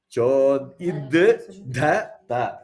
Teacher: that da, which is alpa prana da, then immediately followed by mahaprana da. Then the ta.